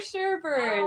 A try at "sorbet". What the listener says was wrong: And it's not even pronounced sherbet. No second R on it.